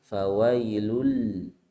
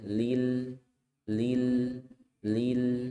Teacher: Nah, di sini ada lam tasydid dengan lam sukun berdekatan ya. Di lam tasydid ada hentakannya fawailul. Kalau lam sukun biasa saja lil, lil, lil.